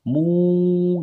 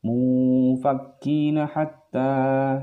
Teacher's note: ketika nun mati bertemu dengan huruf fa, maka dia suara tanda bacanya adalah seakan-akan seperti ny. Kalau ikhfa ab'ad tadi seperti ang, kalau ini seperti ny. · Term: ikhfa ausat